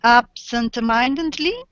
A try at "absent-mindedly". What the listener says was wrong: Yeah, absent-mindedly. Correct.